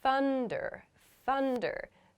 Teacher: so here I'm making a u sound after my unvoiced th